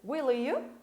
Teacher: Eu juntei o L do final do will com o I do you. Claro, não é um I, é um Y, mas o som dele é de I.